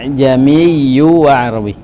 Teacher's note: Jadi hamzah itu tidak dikeluarkan di makhrajnya. Ya, dia seperti huruf mad. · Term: tashil